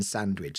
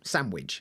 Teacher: some people will drop the d in sandwich